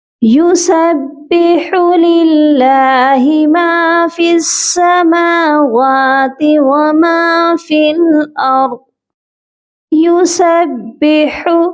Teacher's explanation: یسبح، ہا کی آواز حلق سے آئے گی،